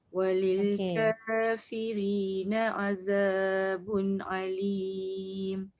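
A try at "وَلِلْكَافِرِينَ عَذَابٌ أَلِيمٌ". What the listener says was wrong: Za tu hujung lidah keluarkan. Alim. Jangan alim. Nanti dia jadi macam ain juga. Satu ain, satu hamzah tu. Azabun alim.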